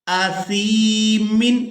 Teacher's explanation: یہاں سا کو یا مدہ کی وجہ سے کھینچ کر ادا کریں گے. یا ساکن ہو اور اس سے پہلے والے حرف کے نیچے اگر حرکت زیر ہے تو وہ یا مدہ ہوتی ہے.